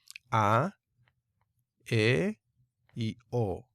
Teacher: el sonido de la iota desaparece y solamente queda el sonido de la vocal larga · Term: iota subscrita